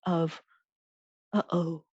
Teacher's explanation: you suddenly cut off your voice in the back of your throat like the sound in the middle of uh oh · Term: glottal stop